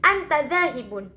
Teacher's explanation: Semisal kita mengucapkan anta dzahibun itu dalam keadaan datar, maka kalimat tersebut itu merupakan suatu kalimat pernyataan. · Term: intonasi datar